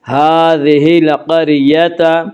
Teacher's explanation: را ساکن سے پہلے قاف کے اوپر زبر ہے اسے را ساکن کو پر پڑھیں گے